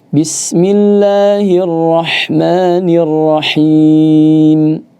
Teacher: saya juga ingin sampaikan tebalnya ya, yaitu hanya di ro saja. Di ro-nya saja. · ha ini dari tenggorokan bagian tengah, wastul halq